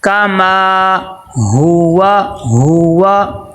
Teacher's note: کاف کو لمبا نہیں کرنا، حرکات غیر مدہ میں سے میم کو لمبا کرنا ہے کیونکہ اس کے آگے الف مدہ آ گیا